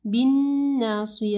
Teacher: نون مشدد ہے، یہاں پہ جو ہے کامل غنہ ہوگا اور صاد کو جو ہے سین نہیں پڑھنا، ناصیہ، ٹھیک ہے.